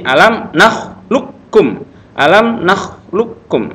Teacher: Tapi karena ini idgham mutaqaribain langsung ke suara kaf. Qafnya enggak ada.